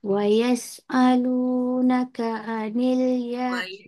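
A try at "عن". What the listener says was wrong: Wa yas'alunaka 'anil huruf ain.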